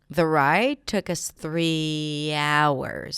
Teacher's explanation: The ride took us three hours: stress on 'hours', right, on that noun.